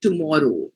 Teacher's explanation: you stretch out the last oh